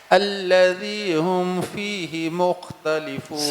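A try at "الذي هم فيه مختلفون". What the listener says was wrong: صحیح ماشاء اللہ ٹھیک ہے.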